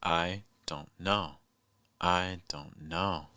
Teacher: In our example from the beginning, I don't know. No is probably your stressed word, and it's probably your highest pitch. Don't could be your most reduced word, whereas I will be in the middle. · Don't could be your most reduced word, whereas I will be in the middle. It'll be your bass pitch, like I don't know.